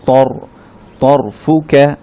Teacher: র সাকিনের আগে যদি এই ফাতহা থাকে, র সাউন্ডটা তখন একটু মোটা ধরনের হয়